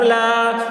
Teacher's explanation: لام کے اوپر کھڑا زبر ہے، کھڑا زبر برابر ہوتا ہے الف مدہ کے، اس لیے کھڑا زبر کو ایک الف کے برابر کھینچ کر پڑھیں گے